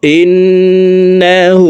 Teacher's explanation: হাকে ঠোঁট গোল করে এক আলিফ টানে পড়বো